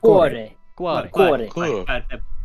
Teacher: You don't quite roll the R. You just let it touch the roof of your mouth.